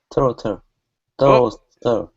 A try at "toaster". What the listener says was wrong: get that s in there